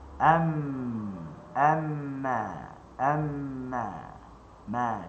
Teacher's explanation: Am amma amma ma ringan dan bila am dia naik ke hidung dia mesti sebab tu makhraj yang utamanya adalah bibir makhraj yang sekundernya adalah hidung dia ada dua makhraj laha makhrajan dan kita kena tahu huruf mim dan huruf nun dia adalah adawatul ghunnah perkakas yang memproses ghunah tanpa mim dan nun tanpa mim dan nun dia tidak akan ada ghunah.